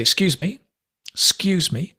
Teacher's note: We say excuse me, excuse me. The ek disappears. We drop it.